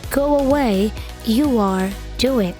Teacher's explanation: di antara Go dan away ada bunyi seolah-olah ada huruf w-nya